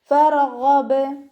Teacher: കൽക്കലയുടെ letter അല്ലല്ലോ, അപ്പോൾ half സുക്കൂന് കൊടുക്കുക. ഗൈനിൻ്റെ മഖ്റജ് ശ്രദ്ധിക്കണം കേട്ടോ. അദ്നൽ ഹൽക്കിൽ നിന്നാണ് വരുന്നത്. തൊണ്ടയുടെ ഏറ്റവും ആദ്യ ഭാഗം. അതിൻ്റെ സൗണ്ട് ഐനിൻ്റെ സൗണ്ട് ആകാതെ ശ്രദ്ധിക്കുക.